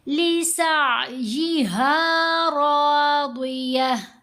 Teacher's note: لِسَعْيِهَا رَاضِيَةٌ، سین کے اوپر زبر ہے، آگے آئین ساکن ہے، تو سین کو جب ہم نے آئین سے ملانا ہے تو جھٹکا نہیں دینا، بلکہ लहर की तरह, वेव की तरह आवाज़ गले में जाएगी।